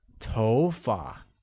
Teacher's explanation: carries a mid rising tone on Oh